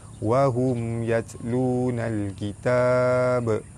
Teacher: mim mati bertemu dengan ya, izhar syafawi, terang jelas tanpa dengung